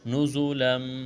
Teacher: تنوین کے بعد میم ہے، ادغام کریں گے، غنہ کریں گے یہاں پر